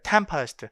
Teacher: tempest인데 스트레스를 받지 않으니까 약화 모음으로 바뀌는 거예요